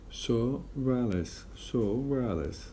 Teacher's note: In fast speech, we insert re sound between the O, between O and A of Alice. So it would be pronounced as a so Ralice. · we actually pronounce the re sound even if there were no R letter separating the two vowels in the two words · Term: insertive re